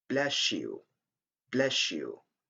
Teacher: And also we have a simulation of the sound s and the sound ye. When you have a word ending with the sound s and another one starting with the sound yeah, we have the sound sh, like in bless you, bless you.